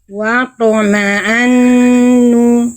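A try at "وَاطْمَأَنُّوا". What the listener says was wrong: Jangan jadi ain. Watoma'annu. Bunda kenapa jadi sengau semua suaranya? Watoma'an. Yang sengau cuman ketika melafalkan an aja, nun tasydid nih. Nih, kalimatnya di atas ini jangan semuanya sengau bunda. Watoma'an. Watoma'annu.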